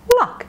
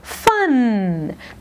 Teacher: notice luck is shorter than fun do you remember why luck voiceless at the end fun voiced · Luck, voiceless at the end, fun, voiced at the end.